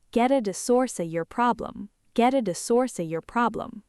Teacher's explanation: Stressed peaks, get, source, problem. Valleys containing our targets, at the, of your.